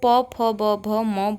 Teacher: ठीक है, अगर हमसे पूछा होता प वर्ग, तो प वर्ग आता हमारा ओष्ठ में, क्योंकि प वर्ग को प, फ, ब, भ, म बोलते वक्त हमारे जो होंठ हैं वो आपस में मिलते हैं।